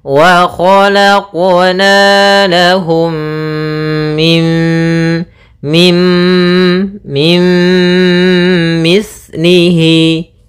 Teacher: ini maka kita namakan dengan bacaan Idgham bhunah cara membacanya adalah memasukkan nunnya kepada mim Tapi tidak secara sempurna karena dia idghamnya idgham naqis